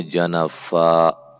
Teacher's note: جس کلمے کے آخر پر دو زبر ہوں اسے وقف کی صورت میں الف سے بدل کر الف کے برابر ہی لمبا کر کے پڑھیں گے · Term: دو زبر پر وقف